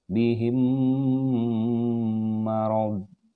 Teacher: mim mati bertemu lagi dengan huruf mim dan ini disebut dengan idgham mimi